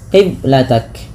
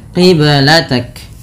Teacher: Qiblatak ada bacaan qalqalah pada lafal huruf ba yang disukunkan. Ba sukun merupakan salah satu bacaan qalqalah yang dimana harus memantul. Kesalahan yang terjadi dalam membaca qalqalah yaitu tidak memantulkannya, qiblatak.